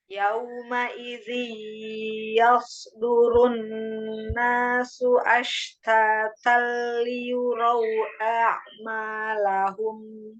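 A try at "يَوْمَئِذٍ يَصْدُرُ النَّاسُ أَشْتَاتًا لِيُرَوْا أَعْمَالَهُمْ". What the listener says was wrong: Iya, jangan yauma idzi, jangan diayun. Yauma idzi, yauma idzi yasdurunna, dan pada kata liyurau jangan amalahum.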